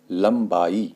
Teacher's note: ब से पहले अनुस्वार का प्रयोग किया गया है तो इसलिए यहां पर इसका उच्चारण म के रूप में होगा